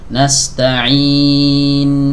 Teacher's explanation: nunnya tapi enggak dialirkan nastainin nah ini diputus suaranya enggak boleh huruf nun punya sifat tawasud atau bainiah jadi dialirkan sedikit